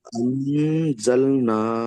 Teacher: জ কে নয়, তাই নুন সাকিনকে নাকে তুলে একালি পরিমাণ। নুনকে, নুন সাকিনকে একালি পরিমাণ নাকে তুলে গুণা করে পড়িতে হবে